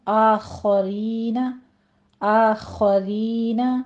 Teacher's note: آ میں فتح قائمہ ہے، 2 کاؤنٹ کریں گے، اور خا مفخم پڑھتے ہوئے آپ نے فتح کی آواز لمبی نہیں کھینچنی۔